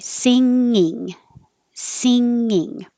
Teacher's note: you have the same E vowel for both parts, both syllables. It's the eat vowel. So your tongue is already starting very high, sing, and then going up for the NG, and then down, and then back up for the second NG.